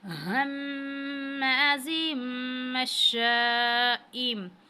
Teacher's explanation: हम्माज़िम मश्शाइम, تنوین کے بعد اگر با آ جائے تو یہ اقلاب میں سے ہے، اقلاب کا قاعدہ لگے گا، اور ہم تنوین کو میم میں بدل کے پڑھتے ہیں